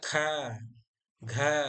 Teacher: मतलब जिसे बोलने पर मुंह से ज्यादा हवा निकलती है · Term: महाप्राण